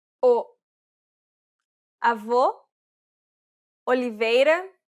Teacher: it's the closed version this means that the mouth and tongue are positioned a little bit higher it's quite similar to the o sound in the word coal